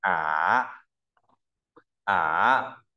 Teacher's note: có độ cao là 2 1 4 mình đọc là thấp vừa xuống thấp nhất lên cao vừa đọc hình chữ V và chúng ta cũng viết giống hình